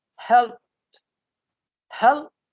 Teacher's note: The peh and teh are connected together. We don't say helbet.